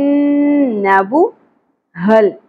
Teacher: ہا اقصی حلق سے گہرائی کے ساتھ سانس کی اواز نہیں انی چاہیے